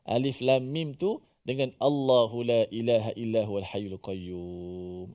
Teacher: Kita membacanya alif lam mim tu sebanyak 6 harakat. Lam dibaca 6 harakat.